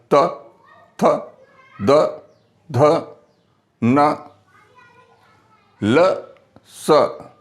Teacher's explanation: दांत, जीभ की जो हमारी नोक है, दांत से टकराने के बाद में और जो है वापस आ जाती है। जैसे बोलिएगा त, थ, द, ध, न, ल, स। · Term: दंत्य